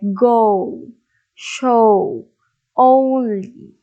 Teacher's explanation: have this vowel sound oh okay oh the neutral oh sound this is actually a diphthong there is a change in the pronunciation in the middle of the word · So this is an example of diphthong. So from o, it goes down to oo